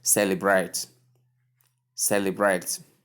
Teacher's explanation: Correct syllable, correct stress is on the first syllable.